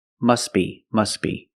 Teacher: you link the words you pronounce it must be must be the t is silent because it's between consonants